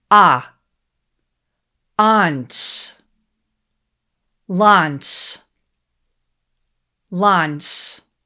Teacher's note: The spelling here is L-A-U, but in English, we don't say ow with A-U. This word has a vowel sound, ah.